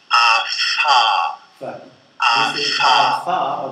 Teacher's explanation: the labiodental place of articulation, where we can observe a constriction between the lower lip and the upper teeth. A typical consonant would be fa.